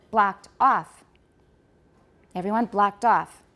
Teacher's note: the second part usually has tonic stress so it's going to sound higher